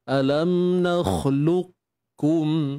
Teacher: Untuk wajah yang kedua, kita baca dengan idgham naqis, iaitu dengan mengekalkan sifat isti'la pada qaf. Sifat tebal pada qaf tu kekalkan.